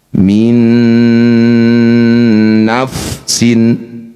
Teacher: Nun sukun bertemu nun disebut bacaan idgham bighunah. Nun pertama masukkan nun kedua dengungkan dua harakat. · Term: idgham bi gunnah